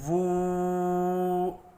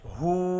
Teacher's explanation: الٹا پیش ہونٹوں کو گول کر کے تھوڑا سا کھینچ کر پڑھا جاتا ہے